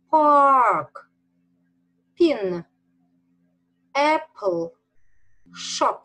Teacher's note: этот английский звук произносится как русский звук с придыханием